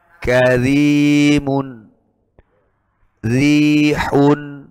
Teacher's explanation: Caranya ditahan dagunya, kemudian dikurangi daya getarnya ra. Dikurangi bukan jumlah getarnya, ya. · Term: dibaca tipis